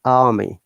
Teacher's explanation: R is silent, or R is replaced by vowel sound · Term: non-rhotic